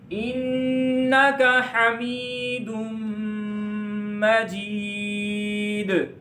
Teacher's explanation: میم کو لمبا کرنا ہے, جیم کو لمبا کرنا ہے, دال پر قلقلہ کرنا ہے